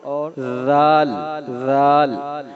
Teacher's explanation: زبان کی جو ٹپ ہے، زبان کی نوک سامنے کے دانتوں کی ٹپ کے ساتھ نوک کے ساتھ لگتی ہے